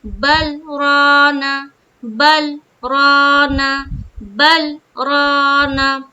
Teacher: را کو پر رکھیں گے، الف مدہ کرتے ہوئے را کو پر رکھیں گے، اور نون کو جلد ادا کریں گے